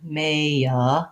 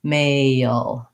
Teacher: I have to do kind of a schwa or an sound before my L, and that will give me the dark L. So the back of my tongue stays down in the central position, maya, and then the front of my tongue will lift to finish the L, male.